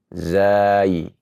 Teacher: Huruf yang merupakan huruf shafir karena keluarnya dari ujung lidah dengan pangkal atau gusi gigi seri bawah. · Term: huruf zai